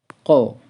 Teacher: pangkal lidah dengan langit-langit yang lurus di atasnya agak keluar sedikit dari makhraj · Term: huruf k